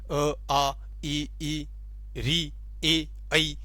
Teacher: इनमें हमारा जो होठ है वो गोलाकार न होकर सामान्य रूप से रहते हैं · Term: अवृत्ताकार